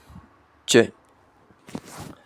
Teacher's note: air flow is initially stopped then released with friction accompanied by vocal cord vibration · It is a voiced affricate, where the tip or blade of the tongue makes contact just behind the alveolar ridge, that is a bony ridge behind the upper front teeth.